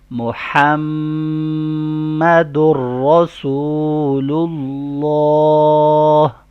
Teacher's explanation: Next part پڑھیں گے، محمد الرسول اللہ، یہاں پہ محمد نہیں کرنا، ہا کا ساؤنڈ کلیئر ہو، میم پہ غنہ ہو، در کا ساؤنڈ در پڑھو، محمد الرسول اللہ۔